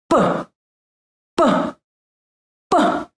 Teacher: The letter P sounds like P in compassion, but try to avoid a puff of unvoiced air after the sound, as typical for the English language.